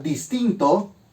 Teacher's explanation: en la palabra distinto no existe un acento gráfico, pero sí existe la sílaba tónica, que en este caso es tin, dis y to funcionan como sílabas átonas.